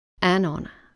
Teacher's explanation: the h in honor is silent and therefore the first sound is a vowel sound